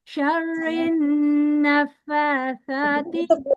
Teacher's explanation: नून मुशद्दद है, इसको घेरा गुन्ना करना है, लंबा खींचना है.